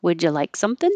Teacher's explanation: It's a yes, no question, so it goes up.